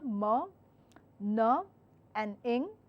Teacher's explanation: Your vibration, of course they are vibrating sounds, but the vibration is in nasal cavity evidently. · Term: nasal sounds